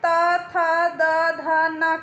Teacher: त, थ, द, ध, न का उच्चारण स्थान। दंत होता है। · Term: त वर्ग